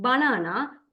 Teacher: in banana, ba is weakly stressed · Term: weak stress